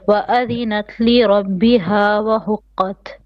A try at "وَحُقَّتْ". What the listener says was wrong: A little bit more in the throat. حقت. In contrast with حقت.